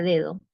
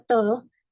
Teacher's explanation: en la palabra dedo, la d inicial suena más fuerte en dedo y en la palabra todo la d suena más suave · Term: alófonos